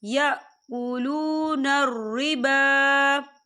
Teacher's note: با کے پر کھڑی حرکات ہے تو ہم اسے 2 یا 3 حرکت کے برابر کھینچے پڑھیں گے۔